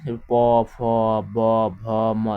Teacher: এগুলো কিন্তু আমাদের ঠোঁট থেকে উচ্চারিত হয়, এই জন্য এগুলোকে বলা হয় ওষ্ঠধ্বনি।